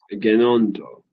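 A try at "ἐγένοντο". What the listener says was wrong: Yes. Yeah, there you go.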